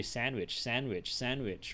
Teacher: So almost nobody pronounces the D. All right, you just drop the D straight away.